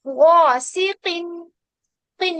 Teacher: तो सौ, दौ, तो, ज़ौ में क्या करते हैं, हम कसरा के साथ भी इसको मोटा पढ़ते हैं, लेकिन ख हो गया, कॉफ हो गया, गइन हो गया, इनमें क्या होता है कि कसरा आ जाने से थोड़ा सा ये हर्फ जो है लाइट हो जाता है